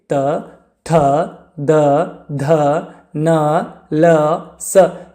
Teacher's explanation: ಹಲ್ಲುಗಳ ಸಹಾಯದಿಂದ ಹುಟ್ಟುವಂತಹ ವರ್ಣಗಳನ್ನು ನಾವು ದಂತ್ಯ ಅಕ್ಷರಗಳು ಅಂತ ಹೇಳ್ತೇವೆ